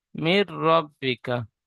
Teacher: রর উপরে জাবার এসেছে তাই রকে পুর করে পড়তে হয়। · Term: র পুর